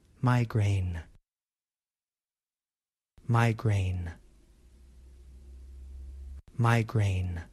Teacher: In American English, we pronounce migraine with 2 vowel sounds, I and A. The first syllable has the I vowel sound, my, and the second syllable has the A vowel sound, grain.